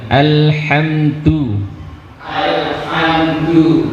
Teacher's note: huruf lam ketika dia tasdid, ketika sukun, maka dia punya sifat bainiyah, dan atau tawassud. Artinya apa? Sedikit mengalir suaranya.